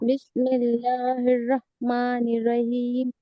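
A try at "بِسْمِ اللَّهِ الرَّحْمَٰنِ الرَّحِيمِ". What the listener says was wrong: हाँ, नहीं यहाँ पे भी रहमानिर रहीम। रहमानिर रहीम निर पढ़िए। दोनों बार आवाज आना चाहिए रॉ की साफ।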